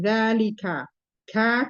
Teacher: Kaf di sini termasuk huruf pangkal lidah, yaitu pangkal lidah bersentuhan dengan langit-langit, di antara langit-langit lunak dan keras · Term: huruf kaf